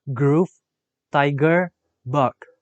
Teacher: The description of g is voiced velar stop.